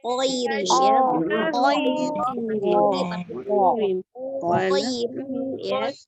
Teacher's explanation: Tekan di huruf ko ya, ditebalkan koirin ya